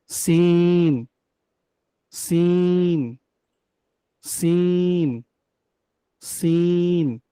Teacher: হুম, সিন। ঝা আর সিন কিন্তু একই জায়গা থেকে উচ্চারণ হবে, জিহ্বার আগাটা সামনের নিচে দুই দাঁতের পেট ও আগার সঙ্গে।